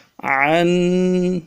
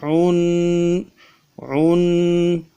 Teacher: تنوین کا مخرج یہ غنہ کریں گے اور غنے کو ایک الف کی مقدار میں کھینچیں گے۔ عن، یہ غنہ ہے، ایک الف کی مقدار میں کھینچنا ہے۔